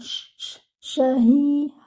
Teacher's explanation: Sha should be with the spreading sound. Shahi. Ha should be given 2 counts.